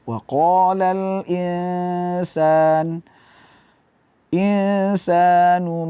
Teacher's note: suara ghunah mengalir dari hidung suara Nun nun sukun tapi lidah k tidak kita tempelkan di · kita baca waqala tidak kita baca waqolal insanu maaha waqolal insan Di sini ada nun mati ketemu Sin eh hukum bacaannya adalah ikhfa jadi kita hadirkan dengung di situ minimal satu Alif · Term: Ikfa